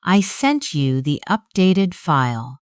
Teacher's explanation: The voice falls because the thought is complete.